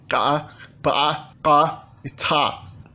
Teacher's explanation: Na fonética, o georgiano se caracteriza pela presença de consoantes ejetivas. São consoantes que têm uma pequena ejeção glotálica depois da sua realização.